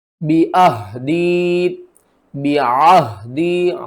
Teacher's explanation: عین کو آپ نے حلق کے درمیان والے حصے سے ادا کرنا ہے، ہا کو حلق کے نیچے والے حصے سے بھاری آواز کے ساتھ پڑھنا ہے۔